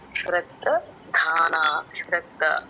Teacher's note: శ్రద్ధ అక్షరాన్ని పట్టుకొని పలకాలండి కొంచెం వదిలేస్తా గాలి కొంచెం బయటక వచ్చిన మహాప్రాణం వచ్చేస్తది